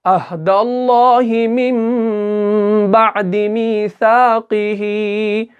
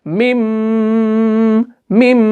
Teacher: तो जब हम इसको पढ़ेंगे अहदल्लाहि मिन बअदि मीसाक़िही, मीम, हमने इस मीम को जो है इस छोटे वाले मीम के साथ मिलाया, इस नून को हमने नहीं पढ़ा, इस नून को जो है मैंने यहाँ पे मिटा लिया। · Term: इक़लाब